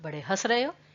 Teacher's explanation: अब हंस में न पर बहुत फोकस था, वो अनुस्वार था, लेकिन हंस, हम कहते हैं ना बड़े हंस रहे हो, क्योंकि आपने उसमें चंद्र बिंदु आता है, कि चंद्र बिंदु अगर लगा दिया दैट मीन्स कि आपके गले से ज्यादा आवाज निकल रही है, नाक से इतनी नहीं निकल रही है। हाँ, नाक से भी निकलेगी क्योंकि न का स्वर है कि हंस, लेकिन नाक से उतनी नहीं निकल रही जितनी कि मुंह से निकल रही है। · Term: अनुनासिक